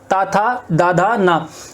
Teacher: देखो ता, था, दा, धा और ना, ता, था, दा, धा, ना, इनको जब तुम उच्चारण करोगे इनका, तो तुम्हारी जीभ जो है वो कहां टकराएगी, जीभ टकराएगी तुम्हारी ऊपरी वाले दांतों से, ठीक है। ता, था, दा, धा, ना, ता, था, दा, धा, ना, ठीक है।